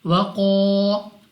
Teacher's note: तो कौफ हमारे पास मुस्तालिया में से है। तो मुस्तालिया में से होने से मुराद ये है कि आपने इस कौफ को पुर पढ़ना है, यानी मोटा।